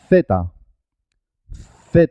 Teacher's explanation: la letra zeta tiene un único sonido pero es un sonido especial tenemos que poner la lengua en los dientes